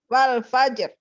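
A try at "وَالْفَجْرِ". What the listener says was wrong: Ini tipis apa tebal nih tadi? Ya, tebal ya. Jangan wal fajr. Wal fajr. Tebal kan? Wal fajr. Bilangnya tebal tapi bacanya tipis. Ya, tebal.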